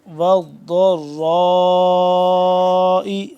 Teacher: را کو بھی موٹا اور را کو لمبا کرنا ہے مد کی وجہ سے